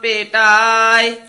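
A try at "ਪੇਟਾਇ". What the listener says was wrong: ढाय ढड्डा नहीं बोलना पेटाय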